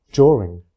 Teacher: in during, the first two consonants have blended into j, from during to during for most speakers.